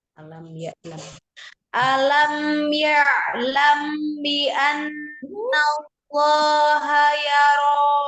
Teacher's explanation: Mim sukun ketemu dengan baknya. Ikhfa safawi. Gunanya kamilah. Sempurna.